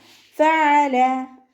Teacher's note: ഫ ലൈറ്റ് ആക്കിയിട്ട് ഉച്ചരിക്കുക കേട്ടോ. മേലെ മുൻപല്ലിൻ്റെ അറ്റം താഴെ ചുണ്ടിൻ്റെ ഉൾവശത്ത് കൊണ്ടുപോയിട്ട് വെച്ചിട്ട് ഉച്ചരിക്കുക. ഫഅല.